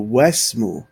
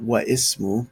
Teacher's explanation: that alif is being glossed over. It's not being pronounced. So the wa already has a fatha on top. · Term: Hamzatul Wasl